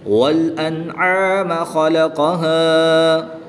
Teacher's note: وقف کی حالت میں الف مدہ کو ایک الف یعنی 2 حرکات کے برابر کھینچ کر پڑھیں گے